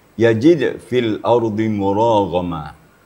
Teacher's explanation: Ini ra dengan ghain itu sama-sama tebal.